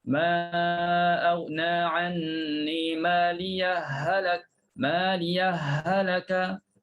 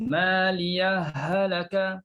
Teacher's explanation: Kalau kita sambung, sambung inilah sama ada kita nak baca idgham, masukkan ha dalam ha. Ha pertama masuk dalam ha kedua.